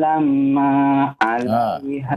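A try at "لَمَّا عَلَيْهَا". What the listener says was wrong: Kembali ya. Mimnya bertasydid ya.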